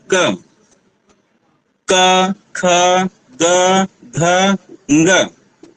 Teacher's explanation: किसका स्पर्श हो रहा है कंठ का स्पर्श हो रहा है कंठ के जो अवयव है वो आपस में स्पष्ट हो रहे हैं आपस में मिल रहे हैं